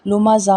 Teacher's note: زا میں سیٹی کی آواز آنی چاہیے